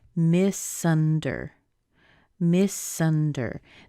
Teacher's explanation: Notice how the S pushes over into the U.